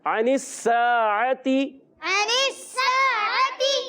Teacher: عین کی ادائیگی حلق کے درمیان والے حصے سے اور حمزہ سے نہیں بدلنا. دونوں عین کو خاص خیال رکھنا ہے کہ یہ حمزہ سے نہ بدل جائیں.